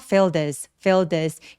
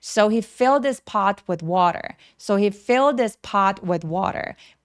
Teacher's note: 제가 filled this라고 연결하는 이유는 뭐냐면 이렇게 대명사처럼 he라는 단어는 문장에서 중요한 키워드가 아니기 때문에 H 소리를 많이 없애 버릴 수 있어요. 그래서 fill this fill this 이런 식으로 부드럽게 연결해 주시면 됩니다.